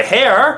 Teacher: to my ear the first time he says it with regular canadian raising